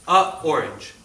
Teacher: a orange creates a break